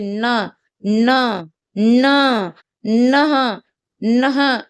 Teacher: ये नाक से और किससे? दांतों से बोले जा रहे हैं।